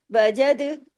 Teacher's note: یعنی دال کو ہلا کے پڑھنے، کلکلا کر کے، باریکی سے لیکن کلکلے کے ساتھ